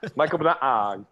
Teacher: with Tagalog, with Filipino, like the second syllable has to be pronounced higher